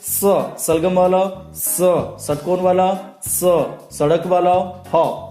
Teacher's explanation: Exam में पूछा जाता है ऊष्म व्यंजन का दूसरा नाम क्या है, संघर्षी व्यंजन। उच्चारण करते समय मुख से गर्म श्वास निकलती है, इसलिए इसको क्या कहते हैं, ऊष्म व्यंजन। इनकी भी संख्या 4 है।